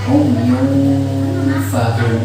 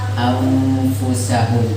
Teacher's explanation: Menghadap fa yunfahu atau anfusau, jangan ang ya, tapi kan fa anfu langsung dengan perut bibir ya, huruf fa tempat keluarnya dari perutnya bibir